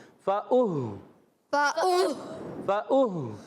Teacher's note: فَأُهْلِكُوا میں فا، وہی جیسے یہاں پر شروع میں تھا، فا کا مخرج آپ کو بتایا تھا، فا پر زبر ہے، کھینچنا نہیں ہے، حمزہ ہے، حمزہ کو ہا سے ملانا ہے، ہا کو کلیئر رکھنا ہے، ہا کی ادائیگی حلق کے نیچے والے حصے سے آواز آئے گی